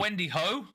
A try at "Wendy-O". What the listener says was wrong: the H is silent.